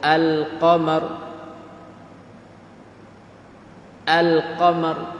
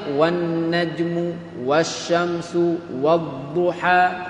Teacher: Kalau hak syamsiah wan najmu wasyamsu wadduha. Tu hak syamsiah pakai idgham masuk lam tak bunyi. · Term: alif lam syamsiah